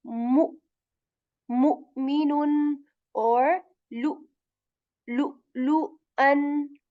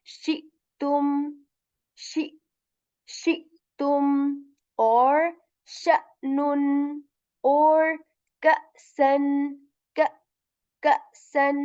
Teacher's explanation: And let's discuss an important one here, which is hamza, which is like a special quality of hamza when it has a sakin. So we make a jerk sound.